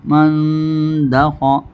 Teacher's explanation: میم نون زبر من، نون ساکن کے بعد اخفاء حقیقی کے 15 حروفوں میں سے دال ہے، اس لیے غنہ کر کے پڑھیں گے، نون ساکن کی آواز کو ناک میں چھپائیں گے، غنہ ہی ہوگا. میم نون زبر من دال زبر دا من دا خا زبر خا من دا خا.